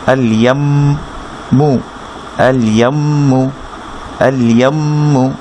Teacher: মিম তাজদিদ, মিম তাজদিদ ওয়াজিব গুন্না, গুন্না করতে হবে